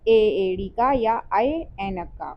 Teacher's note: ठीक है, जैसे ए एड़ी का या आय ऐनक का, तो इनका उच्चारण स्थान कंठ और तालु दोनों से मिलकर होता है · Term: कंठ तालव्य